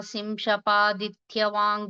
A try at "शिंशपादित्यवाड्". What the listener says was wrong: देविका इत्यत्र महाप्रणः नास्ति, पुनश्च दित्यवाड् नकारः न.